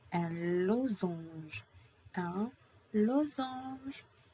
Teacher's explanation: The S is between two vowels, donc it is pronounced za.